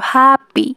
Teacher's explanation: প্রথম H A পিতে আমরা স্ট্রেস বেশি ফিল করছি, অর্থাৎ জোর দিয়ে বলতে হচ্ছে